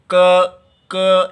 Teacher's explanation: देखिए पीछे जिह्वा मोटी हो रही है क्या, और कंठ स्थान में स्पर्श कर रही है। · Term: स्पृष्ट प्रयत्न